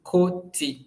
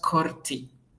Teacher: You know, koti in Swahili is pronounced as koti, but it is written with an R, Korti. So we don't pronounce that R. Yeah, we pronounce it as koti, not korti.